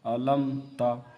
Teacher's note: یہاں پر اظہار شفوی ہوگا کیونکہ میم ساکن کے بعد صرف تا آ رہے ہیں، تو یہاں پر اظہار شفوی ہوگا، یعنی ہم یہاں پہ گنہ نہیں کریں گے